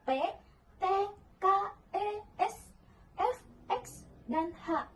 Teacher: yang tak bersuara, pita suara tidak bergetar